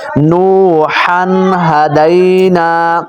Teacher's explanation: تنوین کے بعد ہا آ گیا ہے اور ہا اظہار میں سے ہے اور حروف حلقیہ میں سے ہے، تو اب ہم اس کے اندر غنہ نہیں کریں گے۔